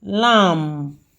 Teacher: the B there is silent, so we are having only M there